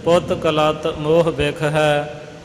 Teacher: ਲਲੇ ਨੂੰ ਥੋੜਾ ਜਿਹਾ ਕਸ ਕੇ ਦਬਾ ਦੇ ਕੇ ਇਹ ਪਾਠ ਕੀਤਾ ਜਾਂਦਾ